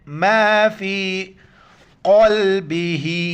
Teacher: ہا کڑی زیر ہی نیچے کی طرف ایک الف ادھر کھینچنا ہے